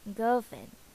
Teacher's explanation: we omit even the R in the middle of the word girlfriend